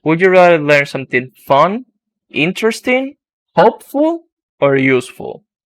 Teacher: it's only on the last one that we use the falling intonation